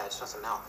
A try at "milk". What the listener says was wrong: No, you're saying it wrong. You're saying Malk, like it's a disease. I'm saying it the way everyone ought to say it. Milk, M-I-L-K.